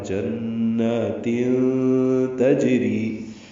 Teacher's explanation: کے بعد تا آنے کی وجہ سے اخفا ہے، جنات تجری، جیم ساکن پہ قلقلہ ہے، را باریک ہے